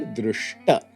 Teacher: the dental takara forces first the unstable palatal sha to jump down to a retroflex shakara